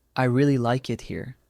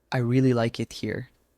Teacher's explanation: In British English, the pitch usually rises slightly in the middle and falls at the end. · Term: inonation